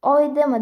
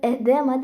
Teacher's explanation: E deb talaffuz qilinadi va bunga misol qilib oydema yoki edema shish so'zini olsak bo'ladi. Oydema deb yoziladi, lekin edema deb o'qiladi, chunki oldidagi O tushib qolyapti.